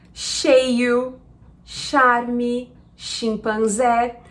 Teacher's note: em português, o nosso CH, ele vai fazer o som de sh